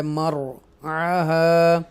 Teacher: را کو بولڈ پڑھیں گے کیونکہ اس سے پہلے زبر ہے، مرعاها، ایسے ہم ادا کریں گے، رائٹ.